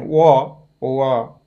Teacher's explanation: वको चाहिँ दन्त र ओष्ठ स्थान हुन्छ। व दन्त र ओष्ठ, ओकारको दन्त र ओष्ठ स्थान हुन्छ।